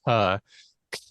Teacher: I'm saying C with a puff of air that's a normal sort of pulmonic exposive C but if I'm